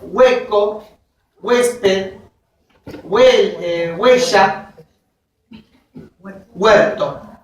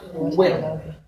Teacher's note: la vocal U tiende a ser pronunciada con refuerzo articulatorio